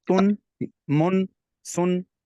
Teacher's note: तनवीन जो है ये इसका जो प्रोनाउंस करने में ये नून साकिन की आवाज़ देता है, जैसे तुन, मुन, सुन, यूं करके इसका जो एंड होता है वो इस अंदाज से जैसे नून साकिन की तरह हो जाता है।